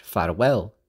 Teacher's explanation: Welsh Farwell which has an irregular stress on the last syllable because it's from English farewell